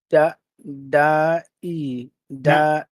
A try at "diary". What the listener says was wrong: Not da, not da. Die. Die. Say die. Diary. Diary. You have to separate those syllables.